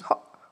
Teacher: the glottal stop at the end of words particularly common in younger speakers